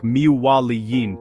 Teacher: The n sound disappears completely creating a smooth connected flow. · For example, if you have the phrase min waliyin, you do not say min waliyin. Instead, you blend them to sound like mi waliyin, with a nasal sound on the wa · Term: Idgham